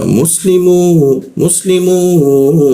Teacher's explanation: Di huruf mim. Maka mimnya kita panjangkan 2 ketukan.